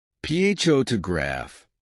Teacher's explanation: in the word photograph the stress is on the first syllable